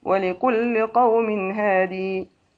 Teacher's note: ابن كثير هادي بإثبات الياء وقفا